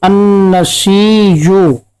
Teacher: उसके हमजा को बियाइही या के साथ पढ़ते हैं, यानी अन्नसीयु, जो इस कलमा के आखिर में हमजा आता है उसको वो या से बदलते हैं